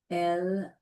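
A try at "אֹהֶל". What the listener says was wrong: Not L. Call ha'ohel, and what's this word?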